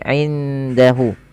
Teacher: Pada lafal indahu ada ada ikhfa hakiki, yaitu suara nunnya disamarkan kepada huruf dal ya, menyamarkannya ke huruf dal, bukan indahu tapi indahu.